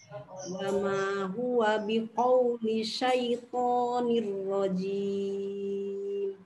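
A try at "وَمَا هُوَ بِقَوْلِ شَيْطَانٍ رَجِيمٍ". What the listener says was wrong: Tinggal itu aja distabilkan. Huruf lamnya jangan mantul ya. Tinggal dilihat ya. Huruf ro-nya tadi arsy, arsy. Memang ada lumayan perlu perjuangan di sini. Ain ditekan, huruf ro-nya mesti tebal. Begitu setelahnya ada syin tengah lidah.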